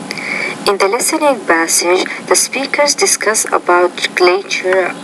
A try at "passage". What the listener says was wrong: First of all, when you say the P, passage, you have to pronounce that with more air. So listening passage, not listening passage, but passage. A little bit more air has to come out.